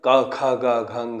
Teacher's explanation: अ बोलते तो कंठ से उच्चारित होता है, और क ख ग घ ङ बोलते हैं तब भी ये कंठ से उच्चारित होता है